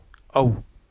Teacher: हमारे जो होठ है वो किस रूप में आएंगे वृत्त के रूप में · औ का उच्चारण होता है दीर्घ है ही वृत्त मुखी है ही